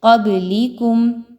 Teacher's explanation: من قبلکم، قاف زبر با، قب، با پر دیکھیں تو جزم کا نشان ہے جو کہ حروف قلقلہ میں سے ہے، یہاں پر با کو ہلا کے پڑھیں گے، روک کے آواز کو نہیں پڑھنا